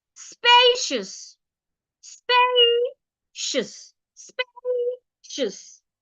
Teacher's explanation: remember you stress the first syllable by saying it louder longer and clearer spacious spaceous spous it has two syllables and it's an adjective